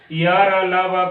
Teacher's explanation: इनका जो उच्चारण है तालु, मूर्धा, दंत एवं ओष्ठ में जीभ के स्पर्श से होता है, परंतु कहीं भी पूर्ण स्पर्श नहीं होता, इसलिए इसे इसका नाम दूसरा नाम अर्धस्वर भी है। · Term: अंतस्थ व्यंजन वर्ण